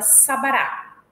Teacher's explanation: de assento não apresentam nenhuma marca distintiva então na palavra Sabará a primeira vogal tem acento secundário a segunda vogal é isenta de assento e a terceira tem assento primário